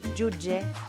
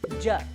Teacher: Fixeu-vos com s'assembla la pronunciació de judge i jutge en valencià. Ambdós amb el mateix so africà sonor.